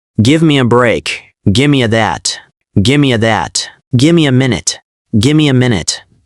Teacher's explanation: Give me, gimme. The V disappears or becomes M. Vowels reduce.